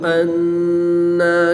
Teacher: نون مشدد میں غنہ کر کے پڑھیں گے۔